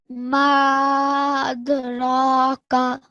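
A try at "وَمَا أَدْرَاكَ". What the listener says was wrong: Okay, don't stretch the ra too long, okay? That's for 2 seconds, but this has got to be longer, okay? So this has got to be at least 3 seconds. Ma adraka.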